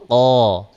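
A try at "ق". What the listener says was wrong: Buka. Dibuka lagi. Dibuka lagi mulutnya.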